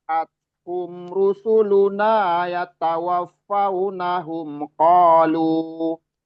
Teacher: Kita berhenti di qalu, 2 harokat aja lu-nya karena berhenti.